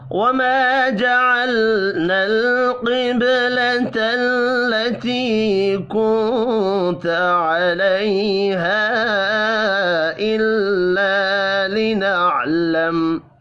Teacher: قوف حروف مستعلیہ ہے، پر پڑھا جائے گا۔ با ساکن پر قلقلہ کریں گے۔